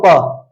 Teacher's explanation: प बोल के देखो, दोनों होठ मिलते हैं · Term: ओष्ठ